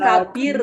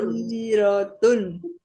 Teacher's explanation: lakabi, binya panjang dulu Bu. Jangan masuk dulu ke roh. Jangan lakabir.